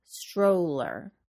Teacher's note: Remember to round your lips to include the W sound in the O vowel sound. Stroller. Japanese and some other Asian students should be sure to place the tip of their tongues just behind their top teeth to create the LC consonant sound.